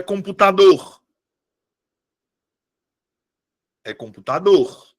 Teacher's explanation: A minha sílaba tônica é a última.